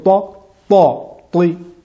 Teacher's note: il n'y a pas de souffle qui l'accompagne